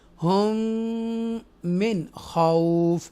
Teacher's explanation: after nun sakina throat letter is coming, kha haruf halkiya, we make a izhar here. We read the nun sakina sound clearly